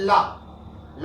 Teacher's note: ला जब बोलते हैं तो जीभ जो है दांत का जो मसूड़ा होता है वहां से जाके टकराती है।